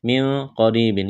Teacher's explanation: نون کے اوپر زبر بغیر کھینچ کے پڑھنا ہے، من قریب، یہاں اخفا کریں گے، نون ساکن کے بعد قاف ہے ، یہ بڑا قاف نقطوں والا ہے، اس کو موٹا کرنا